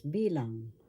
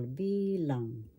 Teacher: First syllable B, second syllable lang. The accent is in the first syllable bilang.